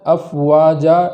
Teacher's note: جب وقف کریں گے تو اس الف کی تاخیر ایک الف کے برابر ہی ہو۔